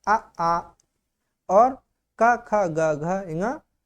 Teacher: उच्चारण कंठ होता है। इनका नाम कंठ वर्ण कहते हैं। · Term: कंठ्य